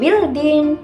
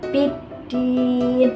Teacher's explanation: Cara membacanya memasukkan huruf lam ke dalam huruf dal. Jadi bukan bildin, tapi biddin dimasukkan.